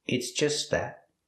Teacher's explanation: The T in just is a stop T, but you don't really hear it because it's between consonants.